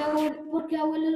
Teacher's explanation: Porque el acento está en la E y no en lo. Es decir, el acento no está en la última sílaba, sino en la penúltima. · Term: grave